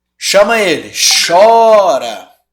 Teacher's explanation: sílaba tônica é a penúltima então é uma paroxítona